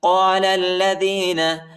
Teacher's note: لام کو لام کے ساتھ ملائیں گے، لام پر شد آیا ہے اور الف نہیں پڑھا جاتا، الف کے اوپر حرکت نہیں ہے۔